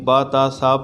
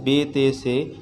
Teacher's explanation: حروف مفردات کو عربی لہجے میں ادا کرنا ہے، یعنی با تا سا پڑھنا ہے، بے تے سے نہیں پڑھنا۔